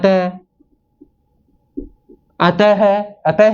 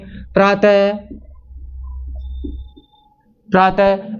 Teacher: Last में है की ध्वनि निकल रही है विसर्ग के साथ में, तो इसका उच्चारण स्थान कंठ ही लिया गया है।